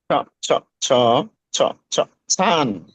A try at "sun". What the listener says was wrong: এ হয় নাই কিন্তু। স, সিন আছে না, সিন। দুই দাঁত কামড় দেন, কামড় দেয়া যে বেড়াগাড়া ওই দাঁতের গোড়া রাখেন। তো স স স স স স স সান।